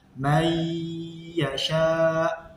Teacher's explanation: Jadi membacanya may yasha harus dibaca dengung selama 2 harokat